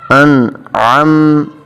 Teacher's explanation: اب عین کو حلق سے ادا کیا جاتا ہے